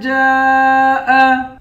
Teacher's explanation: جیم کے بعد الف ہے، اس الف پر مد ہے، اس مد کو 5 الف کی مقدار کھینچ کر پڑھیں گے۔